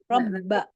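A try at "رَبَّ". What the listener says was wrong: Benar-benar ba, nggak ada suara yang bisa mengalir lagi. Jadi benar-benar berhenti aja. Ba. Iya, seperti hamzah. Ba. Kalau masih nah berhentinya kan nggak boleh, harus ba. Cuman maksudnya huruf ba, ya kayak huruf jim, kayak huruf kaf.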